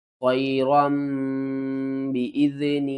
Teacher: یہاں پر دیکھیں تو را کے اوپر میم بنی ہوئی ہے، اس میم کا مطلب ہے کہ جب بھی نون ساکن اور تنوین کے بعد، یہاں دیکھیں اگلا حرف با آ رہا ہے، تو جب بھی نون ساکن یا تنوین کے بعد اگلا حرف با آ جائے تو ہم ان کی آواز کو میم کی آواز میں بدل کر پڑھتے ہیں